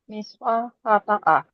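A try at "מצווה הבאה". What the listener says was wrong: There you go. That's how you say next commandment.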